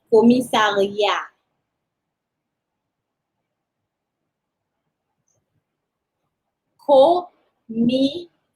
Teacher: do not pronounce the last consonant, so do not pronounce the T